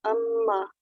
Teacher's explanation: ये मीम मुशद्दद है और इधर हम पहले अम करेंगे तो फिर मा